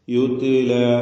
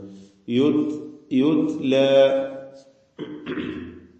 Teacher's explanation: മഹ്മൂസായ ഹംസ് എന്ന സിഫത്ത് നൽകപ്പെടുന്ന അക്ഷരമാണ് ട അതുകൊണ്ട് ശ്വാസചരണം അതാണ് ഹംസ് കൊണ്ട് ഉദ്ദേശിക്കുന്നത് യുത്ല അങ്ങനെ ഓതുക യുത്ല എന്നാണ്